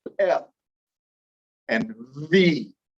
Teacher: have um labiodentals dental meaning teeth labia meaning lips and so labiodental is going to be those places where i use my top teeth and my lower lip to say f and v